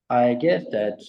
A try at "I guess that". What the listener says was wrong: Kind of become monotone now. I guess that it just sounds like there's a real lack of intonation now. But then we get, I guess that, and that, I guess that, that sounds nice and connected and natural.